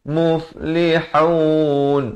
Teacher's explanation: bukan lihun, itu ha simpul, salah ya. Di sini ha pedas.